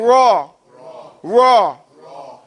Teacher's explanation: when you pronounce Ra, your tongue does not touch anywhere in your mouth